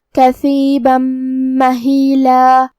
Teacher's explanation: ہم یہ تنوین کو میم میں ملا کے غنہ اور تشدید کے ساتھ یہ حکم کو ادا کریں گے. کثیبا مہیلا. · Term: ادغام بغنہ